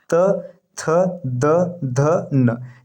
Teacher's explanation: त थ द ध न ये दंत होता है